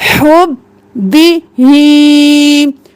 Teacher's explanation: हा गले के दरमियान से बिल्कुल साफ आवाज में